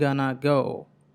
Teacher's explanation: ఆ గనా అనేటువంటి పదంలో రెండు ష్వాలు ఉన్నాయి. గనా గో, the head master, to అని అనకుండా అంటున్నాం.